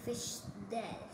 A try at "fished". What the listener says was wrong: Fished? Like yeah, I fished the other day. In that word, fished, it just sounds like a d instead of like ed. Because fished, that sounds wrong, right? I fished yesterday, but you could say I fished yesterday.